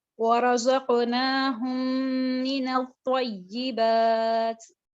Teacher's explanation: ادغام شفی میں ہم نے دیکھا تھا کہ اگر میم ساکن کے بعد آپ کو ایک اور میم نظر آئے گا تو آپ کیا کریں گے, ان دونوں میم وہ جو دونوں میم ہیں آپ ان دونوں کو ملا دیں گے, مدغم کر دیں گے آپس میں, ان دونوں جو میم ہیں ان کو ملا کر پڑھیں گے